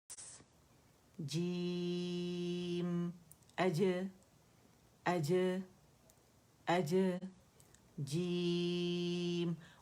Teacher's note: وسط اللسان سے یاد رکھیے گا اج. ٹھیک ہے، اج وسط اللسان سے جیم ادا ہوتا ہے